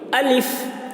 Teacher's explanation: الف جلدی بولتے ہیں اور آخر میں فا جب بولتے ہیں تو ہوا نکلتی ہے